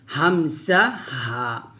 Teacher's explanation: অবশ্যই কন্ঠনালী অর্থাৎ গলার শুরু থেকে খলকের শুরু থেকে উচ্চারণ করতে হবে হামজাহ হা এভাবে একটু শক্ত করে বলতে হবে হামজাহ হামজাহ হা